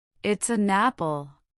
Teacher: The consonant sound at the end of the first word slides directly into the vowel of the next.